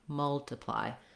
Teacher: The TI syllable is unstressed, so it sounds like an I or even like a schwa. Multiply. So you really want to be short and reduced. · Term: reduced vowel